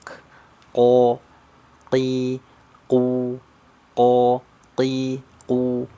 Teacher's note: huruf qaf itu keluarnya dari pangkal lidah paling belakang